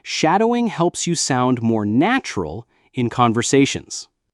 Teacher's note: did you notice how the voice rises a little bit at the end of the sentence? That's a key feature of English intonation, especially when asking a question or giving an important piece of information.